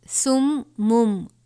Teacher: یہ میم مشدد ہے، غنہ کریں گے